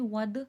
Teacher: دال میں قلقلے کی صفات واضح ہوگی